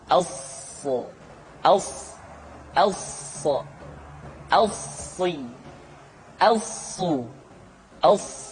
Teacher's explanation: Untuk memudahkan pengucapan huruf sa, Perhatikan sifat as-safir yang dimiliki oleh huruf sha, yaitu suara tambahan yang terdengar menyerupai dengan suara angsa